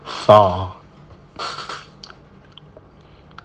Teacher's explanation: Rikhwa, suara dialirkan. Isti'la, pangkal lidah naik ke atas sehingga suara menjadi tebal.